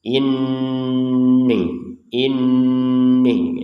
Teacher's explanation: Ya ditahan dengungannya jangan cepat-cepat